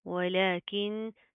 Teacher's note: नून साकिन है, उसके बाद हरूफ इख्फा में से काफ आ रहा है, तो अगेन साउंड इन नोज, यानी कि इख्फा का कायदा आ रहा है, हम नाक के अंदर साउंड पैदा करेंगे, ठीक है।